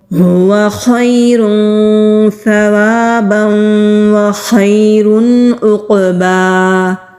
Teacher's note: خا حلق سے ادا کریں گے اور موٹا بھی پڑھیں گے۔ یا ساکن سے پہلے زبر ہے تو یا لین ہے، نرمی سے ادا کریں گے۔